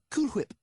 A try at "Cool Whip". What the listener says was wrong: You're saying it weird. Why are you putting so much emphasis on the H? Say whip. Now say Cool Whip. Cool Whip. Cool Whip.